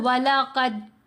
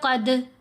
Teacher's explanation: جب ہم پڑھیں گے قد، یہ قلقلہ ہے، یعنی دال کی آواز ہل رہی ہے، سمود آواز نہیں رہے گی